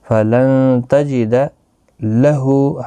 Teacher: ہا کے اوپر الٹا پیش ہے، ایک الف کی مقدار کے برابر کھینچ کر پڑھیں گے